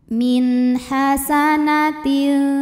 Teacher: Lalu ada hukum izhar halqi karena nun sukun menghadapi huruf halqi atau huruf tenggorokan yaitu ha, maka nun sukun dibaca jelas